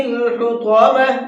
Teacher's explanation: حطمہ کے اندر طا ہے، طا کو منہ بھر کے پڑھیں گے۔ اگر ہم اس کو منہ بھر کے نہیں پڑھتے ہیں تو پھر یہ تا بن جائے گا اور لفظ کے بدل جانے سے عربی کے اندر اس کے میننگ بھی بدل جاتے ہیں۔